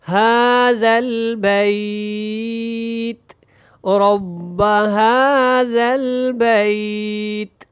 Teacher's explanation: نیچے یہ جو زیر ہے یہ ختم ہو جائے گی، اور اس کو اپنے تا باریک پڑھنا ہے، موٹا نہیں کرنا اور قلقلہ بھی نہیں کرنا